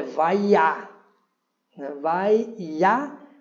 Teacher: Observando aqui, novamente, nós temos um vav, né, um patar, um yud, né, um pontinho aqui, nós temos aqui o kamatz, e a acentuação, né, ela está no iá